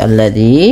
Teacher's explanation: ujung lidahnya nempel dan dia dipanjangkan dua harakat karena mad thabi'i